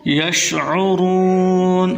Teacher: عین کو حلق سے نکالنا ہے، را کو پر کر کے پڑھنا ہے